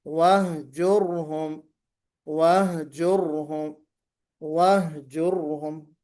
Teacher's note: را ساکن ہو، را ساکن سے پہلے ضمہ ہو، تو ہم اس را کو بھی موٹا پڑھیں گے